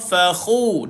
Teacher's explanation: Fakhu, hujung kerongkong. Keluarkan air pada kha, fakhu. Matikan dal.